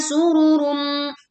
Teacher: the domah tandwin meets mim, don't rush because this buzzing sound sounds perfect